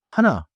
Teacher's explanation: Notice the soft breath at the very start.